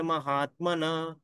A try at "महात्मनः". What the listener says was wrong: विसर्ग का उच्चारण फिर से कीजिए, फिर से एक बार कहिए। महात्मनः, महात्मनः, महात्मनः।